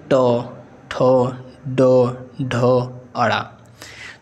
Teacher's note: हमारे जीभ तालू के भाग अगले वाले भाग को छूती है तो इसीलिए इसको कहते हैं मूर्धन्य व्यंजन · जैसे आप बोलेंगे ट, ठ, ड, ढ, अड़ा, तो इसमें क्या होता है हमारी जीभ तालु के भाग अगले वाले भाग को छूती है